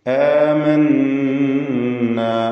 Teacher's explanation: നൂൻ മുശദ്ദദ മണിച്ചുകൊണ്ട് ഉച്ചരിക്കണം